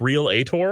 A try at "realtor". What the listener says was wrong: It goes from real straight to tor. There is no There's no